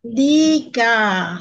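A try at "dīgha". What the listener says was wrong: Long I, don't forget, huh? Yeah, long I, huh? Don't forget, it's the long I, huh? Diga.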